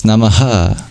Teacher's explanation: the dot below the H is a visarga, an expulsion of breath. But normally it's just sounded like ha, so it's namaha.